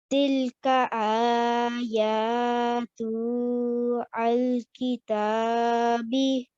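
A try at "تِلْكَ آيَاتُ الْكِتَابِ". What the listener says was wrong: Now remember, this tu joins on directly onto the alif, to the lam. So we'll say tul. We won't be reading the alif. It's a blank alif. So you'll say tul. Ayatul kitabil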